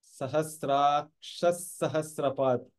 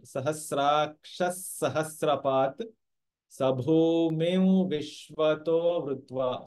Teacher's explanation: Visarga followed by a sa becomes the one more sa